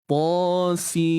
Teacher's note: Idgham bi gunnah, masuk serta dengung. Dengung mesti dalam kadar 2 harakat tu lah.